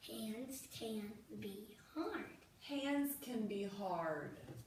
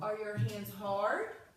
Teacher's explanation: So when I read this sentence, I'm reading at the same speed or the same pace, but my voice just stays flat or it drops off a little for the period, and then for the question mark, it goes up a little.